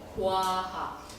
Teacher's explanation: 와에서 오에서 시작하시면 돼요. 오에서 시작하고 아에서 끝나시면 돼요. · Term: 이중모음